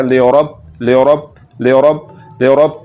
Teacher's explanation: اور را کے اوپر زبر آ گئی تو اس کو پر کرنا ہے